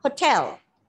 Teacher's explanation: the unstressed syllables are reduced to the schwa